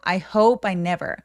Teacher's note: 새로 주어 동사 나올 때 끊어읽기 해주시면 되고 I hope I 만약에 문장을 빠르게 말씀하시느라 이걸 쭉 연결을 한다면 P 소리 뒤에 모음이 이렇게 따라오는 경우에는 I hope I 하면서 빠처럼 살짝 연결해 주셔도 돼요. 근데 너무 I hope I는 아니고 I hope I never.